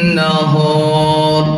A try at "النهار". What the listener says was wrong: bukan nahar, ra tu saja yang ditebalkan, jangan nahar. Saya bukan ni cakap ni sebab ramai belajar-belajar kebanyakannya kalau tak tahu macam mana nak tebalkan ra secara tak langsung, huruf sebelum ra tadi dia dah tebalkan sesiap. Wan nahar, wan nahar, hanya huruf ra saja yang dibaca dengan tebal.